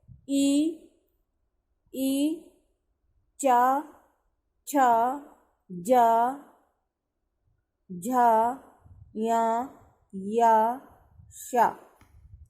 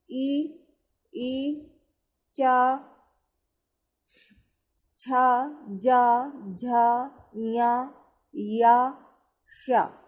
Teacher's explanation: जब हम ये शब्द बोल रहे हैं तो हमारी जीभ देखो तालू पे लग रही है ऊपर।